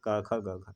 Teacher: तो कंठ ध्वनियों में कौन कौन होता है? तो जो क वर्ग होता है ये सभी को कंठ ध्वनियाँ बोला जाएगा